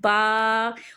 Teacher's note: با الف زبر با، اور با کو باریک پڑھیں گے، موٹا نہیں کریں گے